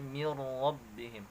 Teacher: tulisannya min rabbihim tapi dibaca mir rabbihim karena di situ terdapat hukum idgham bila gunnah, ya, karena nun sukun bertemu huruf ra, ya.